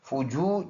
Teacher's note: واو مدہ ایک الف کے اندازے سے لمبا کرنا ہے